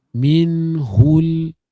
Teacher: Kalau kita baca macam ni, minhul sebenarnya bukan pada makhraj ha. Makhraj huruf ha mesti keluar daripada halqum kita. Halqum paling bawah kita. Hu, dan dia ada angin huruf hams.